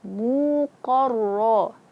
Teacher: Terangkatnya pangkal lidah ke langit-langit atas. Akhirnya suaranya itu terkepung di mulut-mulut atas. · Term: isti'la